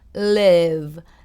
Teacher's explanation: when the letter L comes, my tongue touches the upper part of my upper front tooth. So it would be live.